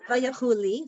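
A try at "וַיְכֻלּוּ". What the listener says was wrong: not Lee. Here's your, what's this vowel?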